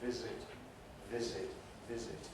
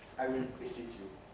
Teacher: there should be voicing right through